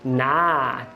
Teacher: a vogal da palavra not não é O. No inglês americano é A. Esse A aqui, ó, A.